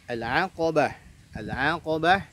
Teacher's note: ainnya itu tipis, qafnya tebal, ba-nya tipis